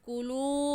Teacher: واو مدہ کو ایک الف کی مقدار کھینچ کر پڑھتے ہیں